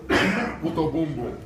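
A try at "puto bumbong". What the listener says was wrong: No, it's the end is the NG, so it's boom bong.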